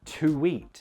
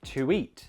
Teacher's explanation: The awesome nerds of you will notice that between to and eat, again, we're connecting an intrusive w